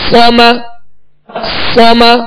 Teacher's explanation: صاد کو پر پڑھیں گے اور اس میں سیٹی کی آواز پیدا ہوگی